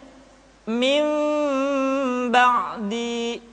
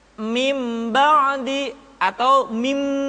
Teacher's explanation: tidak boleh tergesa-gesa kemudian diucapkan mim dengan cara yang samar caranya ketika mengucapkan huruf mim kedua bibir kita agak sedikit direnggangkan tidak sempurna rapat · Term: iqlab